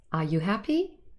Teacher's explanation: a rising intonation this is very typical for yes no questions in English